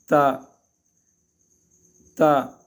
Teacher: سامنے کی جو 2 دانت ہے ان دانتوں کی جڑ اور تالو سے لگ کر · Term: حرف تا